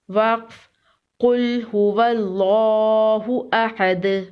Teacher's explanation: وقف کی صورت میں دال پر قلقلہ ہوگا۔ دال حروف قلقلہ میں سے ہے۔